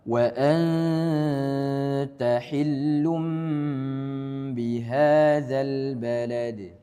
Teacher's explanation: ada tanwin bertemu dengan ba, maka dihukumnya sebagai iklab, ditahan gunnahnya. Setiap hukum nun sukun selain izhar, ya, maka gunnahnya dipanjangkan.